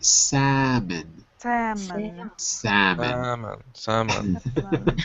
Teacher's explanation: yeah we say salmon salmon salmon salmon salmon without L you you write the L but you don't say it